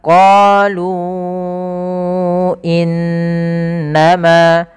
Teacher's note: Kemudian sebelumnya ada tanda seperti ini, alif yang di tengahnya lingkaran, artinya alifnya dianggap tidak ada. Maka dia lu 2 harokat, ketemu hamzah setelahnya, maka dia menjadi 4 harokat. Nah, inilah yang kita namakan dengan mad jaiz munfasil. · Nah, inilah yang kita namakan dengan mad jaiz munfasil. Apabila adanya mad tabi'i bertemu dengan hamzah dan hamzah tersebut di lain kata, kita baca dengan bacaan mad jaiz munfasil, untuk kadarnya adalah 4 harokat.